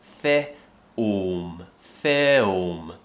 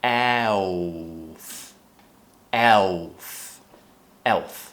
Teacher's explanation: Again, we're creating this very round shape for the dark L.